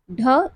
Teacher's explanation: इसे घोष महाप्राण मूर्धन्य उत्क्षिप्त कहते हैं।